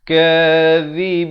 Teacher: zid ujung lidah keluar di antara 2 gigi